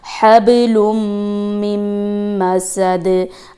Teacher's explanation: मीम पे तशदीद है तो वो अपने गुन्ना करना है, स्टे करना है